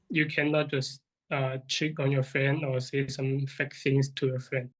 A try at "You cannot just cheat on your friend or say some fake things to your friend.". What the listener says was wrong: And then again, we get the pronunciation. You just lose the listener a little bit. Say some fact things. It sounds like the candidate says a swear word here.